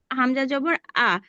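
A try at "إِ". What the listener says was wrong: আপু, হামজা জবর না, হামজা জের নিচে আছে।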